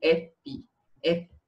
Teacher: Você tem lábio dental, tipo F, F. Você vai ficar com lábio no dente, lábio dental.